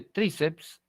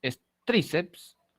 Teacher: La mayor fuerza de voz está en la penúltima sílaba, es una paroxítona